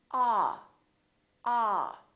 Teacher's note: your jaw is all the way down and your lips are kind of oval shaped like an egg ah don't push your lips forward too much don't say all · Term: ah sound